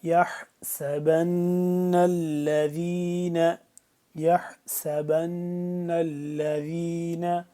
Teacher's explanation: نون یہاں پہ مشدد ہے تو اس کو ہم غنہ کریں گے اور ذال کو نرمی سے پڑھیں گے